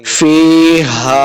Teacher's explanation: ہا کو حلق کے نچلے والے حصے سے ادا کرنا ہے